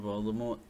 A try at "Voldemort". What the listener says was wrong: It's actually Voldemort. There's no T. Yeah, but you don't say the T. The T is silent. Voldemort.